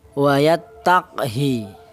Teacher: Jadi qafnya sukun, ha kasroh pendek. Bukan panjang ya.